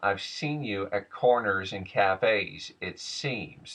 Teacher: the s sometimes equals a bit of a lisp sound of SH / ch